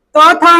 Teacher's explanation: और जितने भी त थ है वो दंत है